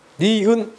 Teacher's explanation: 혀 끝이 윗 잇몸에 닿는 모양이죠. 혀가 이렇게 니은자 모양으로 꺾입니다. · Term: 설음